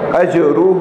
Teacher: محسن فلہ, اجرہ میں جیم ساکن کے بعد جیم ساکن ہے, قلقلہ ہوگا